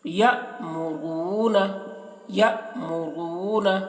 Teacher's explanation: جزم ہے، اور یہاں پر واو کے اوپر جزم ہے تو واو کو را سے ملا کر پڑھیں گے اور واو کو کھینچیں گے بھی کیونکہ واو مدہ ہو رہا ہے یہاں پر تو ایک الف کے برابر کھینچیں گے ، اور را کو پر کر کے پڑھیں گے، را کے · اب یہاں پر بھی دیکھیے حمزہ کے اوپر جزم ہے تو حمزہ تو پیچھے والا حرف یا سے ملا کر پڑھیں گے اور جھٹکا بھی لگائیں گے